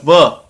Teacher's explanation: व बोलने में निचले होंठ और ऊपर के दांत